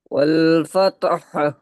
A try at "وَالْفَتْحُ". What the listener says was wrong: ফাতহা হবে না, হালকা এই হাটা, মানে যে পুরোটা উচ্চারণ করছি এর হাফ উচ্চারণ হবে, হা এর হাফ উচ্চারণ হবে। ফাত।